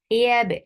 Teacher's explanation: Ya, ya is very soft. You're lifting your tongue, the middle part of your tongue towards the palate, but you're not touching the palate. That is making ya very light.